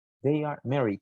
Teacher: Esta oración sigue un proceso natural, si se fijan, un tono así. En ningún momento va como que para arriba o para abajo, simplemente they are married. Es un tono normal.